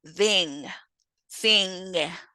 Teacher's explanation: Our last nasal in English is ng, which is voiced, velar, and nasal, such as in thing, thing.